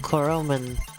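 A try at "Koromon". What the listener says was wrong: Koroman? Please do not pronounce it man. Please. It's gonna be a very long game if you start saying stuff like Koroman.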